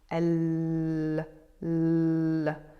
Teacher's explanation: Can you feel that the top of the tongue is almost as if it's closing up behind the teeth? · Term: double L